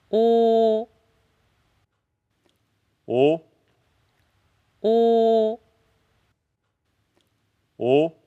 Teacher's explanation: the o sound in Korean sounds very similar to me just as a closed o